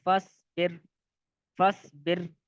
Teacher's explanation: یہاں پر را کو پر نہیں پڑھیں گے بلکہ باریک پڑھیں گے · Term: را کو باریک